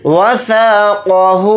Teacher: यहाँ पर क़ाफ़ को मोटा यानी पुर पढ़ेंगे।